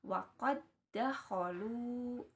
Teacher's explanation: huruf da yang pertamanya itu dileburkan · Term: idgham mutamatsilain